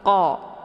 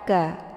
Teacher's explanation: Karena posisi makharijul huruf qa ini di pangkal lidah dekat dengan anak teka. Jadi saat melafadzkan huruf qa itu pangkal lidahnya nempel di langit yang lunak. Qa bukan ka.